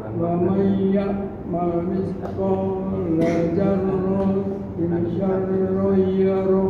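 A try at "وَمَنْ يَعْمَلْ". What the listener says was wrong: Nah, yang terakhir ikhfanya belum ada. Zarratin syarrayyara. Wa may ditahan dulu, Pak. Didengung tak? Wa may ya'mal.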